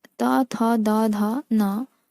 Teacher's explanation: त, थ, द, ध, न, दंत से उत्पन्न होने वाली ध्वनियां हैं